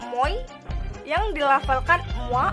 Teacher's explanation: Dalam bahasa Perancis, kata moi yang dilafalkan mwa, sonoritasnya terletak pada unsur kedua. Jadi, pada kata itu terdapat diftong naik.